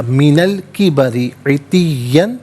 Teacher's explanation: را کے نیچے زیر ہے، را کو باریک کر کے پڑھا جائے گا، من الکبری عتین، یہاں وقف کریں گے تو عتیہ پڑھیں گے۔